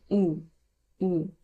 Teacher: এখানে শেষে একটা ও এর একটা হালকা টাচ আছে।